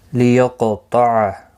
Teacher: لیقطع، قاف مستعلیہ ہے، طا بھی مستعلیہ ہے، دونوں پر پڑے جائیں گے. قاف ساکن ہے، اس پر قلقلہ بھی ہوگا. لیقطع، قاف پر بھی پڑا جائے گا، اس پر قلقلہ بھی ہوگا.